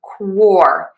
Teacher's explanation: But to say quarterback, we are going to stress quore, the beginning syllable. So we have that k w combination and then the or quo.